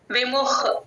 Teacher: మ కి హ ని యాడ్ చేసుకొని గాలి బయటికి వదలాలి